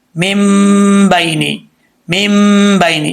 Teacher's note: اب یہاں پر ایک الف کی مقدار غنہ کریں گے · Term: اقلاب